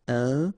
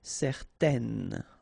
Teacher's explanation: Okay, so in that case, certain, it's quite interesting because you've got this A-I-N together, and then they will produce this un sound. Okay, so it's nasal in your nose, un. Okay, if you add this at the end, then it will change the thing, and then you will pronounce it n.